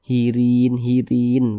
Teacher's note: huruf ra yang memiliki tanda baca kasroh dibaca tipis, dibaca tarkik sehingga pangkalisan kita tuh tidak naik terangkat ke atas.